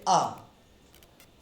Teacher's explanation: आ कहने से आपकी जिह्वा कहीं टच नहीं होगी, ना ऊपर, ना दांत में, ना नीचे, ना दाएं, ना बाएं, कहीं नहीं।